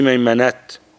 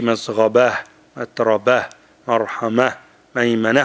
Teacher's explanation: when you stop change it to ها and become ساكن